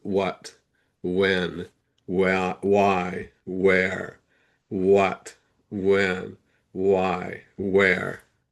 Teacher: question words will have that wah sound, the H is silent